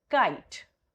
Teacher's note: your mid of the tongue is moving towards the soft palate